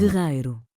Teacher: não puxamos o R da garganta, como acontece no português europeu. Em Portugal a pronúncia seria como guerreiro, quase parecido com o R francês.